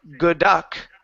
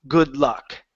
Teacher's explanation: Notice, I don't say good duck. I make the D disappear and it combines into the L. Good luck. See how that rule works?